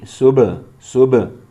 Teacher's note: یہاں پر تجوید کا قاعدہ ہے قلقلہ، با میں آواز ٹکر کھا کے الگ ہوگی، صبح صبح، ہا گلے سے نکالیں گے، خا بھی گلے کے شروع والے حصے سے ادا ہوگا، موٹا پڑھیں گے، قاف کو بھی موٹا پڑھیں گے۔